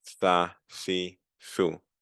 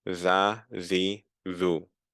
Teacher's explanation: The tha, there's more air coming. Tha, si, thu. While the za, there's more of a raspy zap to it